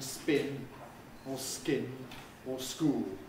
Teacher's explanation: the plosives there are unaspirated they're not voiced